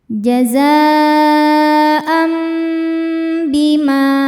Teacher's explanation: Maka bunyi tanwin yang n diganti bunyi mim sukun jadi m, am, sambil dengung jadi tahan. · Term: hukum iklab